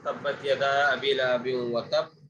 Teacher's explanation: اسی طرح تبت یدا ابی لہب وتب، یہاں پر سختی کے ساتھ قلقلہ اس لیے کیا ہے کیونکہ یہاں پر تشدید بھی ہے، تو تشدید کا اظہار بھی ہو اور قلقلہ بھی ہو